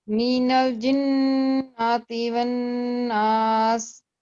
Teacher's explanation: इस पे नून पे जरूर ठहरे, लेकिन फतह को लंबा नहीं करना हमने। नून पे ठहरना है, 2 सेकंड का टाइम देना है नून पे ठहरते, लेकिन फतह को लंबा नहीं करना हमने।